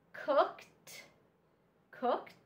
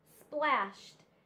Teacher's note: all of these are examples of our e d suffix but this suffix makes the sound t